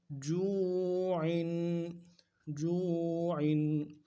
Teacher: عین 2 زیر عین، تنوین ہے، تنوین 2 زیر ہے۔ تنوین کو پڑھنے کے لیے غنہ کرنا ہے اور غنہ کو ایک الف مدار میں کھینچنا ہے